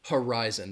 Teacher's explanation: that that you can hear my emphasis on that second syllable horizon that first syllable has that schwa